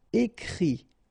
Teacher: Okay, and then the IT, phonetically you pronounce I because final T is not pronounced